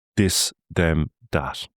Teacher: it's very likely that you're going to drop that H part of it and end up closer to a D sound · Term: TH sound